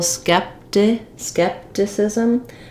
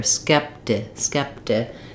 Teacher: even though we write this with a T, we use a little bit of more of a voiced sound here, skepti. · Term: flap T